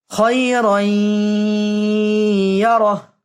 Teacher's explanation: ফামান ইয়া'মাল মিসকালা যাররাতিন খায়রান, রাই এখানে তানবিনের বামে ইদগাম বাগুন্না 4 হরফের একটি হরফ ইয়া আসছে, তাই এখানে ইয়াকে সাকিন দিয়ে তাসদিদ দিয়ে গুন্না করে পড়তে হবে